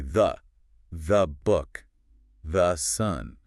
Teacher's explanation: The vowel collapses into a schwa so we can get to the next word faster. It's like the word the actually shapeshifts depending on how important it is in the sentence.